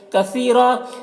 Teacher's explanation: للہ، اللہ کو باریک پڑھیں گے، کھڑا زبر ہے، ایک الف کے برابر کھینچیں گے۔ کثیرہ، سا کو باریک پڑھیں گے، یا مدہ ہے، اسے ایک الف کے برابر کھینچیں گے، اور را کو پر پڑھیں گے اور یہاں پر وقف کریں گے تو ایک زبر کے ساتھ الف پڑھیں گے، جیسے فَبِظُلْمٍ مِّنَ الَّذِينَ هَادُوا حَرَّمْنَا عَلَيْهِمْ طَيِّبَاتٍ أُحِلَّتْ لَهُمْ وَبِصَدِّهِمْ عَن سَبِيلِ اللَّهِ كَثِيرًا۔